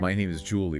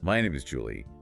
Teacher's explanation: my name is Julie would have a falling intonation right whereas my name is Julie would have a rising intonation